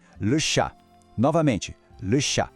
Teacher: Em francês, a palavra é le chat. Preste atenção que o T no final a gente não fala, ele é mudo. E o A tem um som bem aberto.